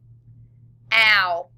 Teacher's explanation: Diphthong O-U, like in mouse.